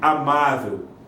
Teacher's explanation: Por exemplo, amável, paroxítona terminada em L, tem acento no má. Paroxítona é a penúltima sílaba acentuada, amável, a penúltima sílaba forte.